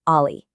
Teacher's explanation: Just notice how sharp, how distinct that sound really is. The transition from that open a vowel straight to the bright i sound creates this immediate auditory spike. It's bouncy.